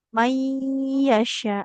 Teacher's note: Nun sukun bertemu ya, maka ini ditahan dulu.